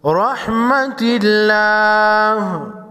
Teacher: را پر زبر ہے، موٹا پڑھیں گے۔ رحمت اللہ، لفظ اللہ سے پہلے حرف تا پر زیر ہے، لفظ اللہ کے لام کو باریک پڑھیں گے۔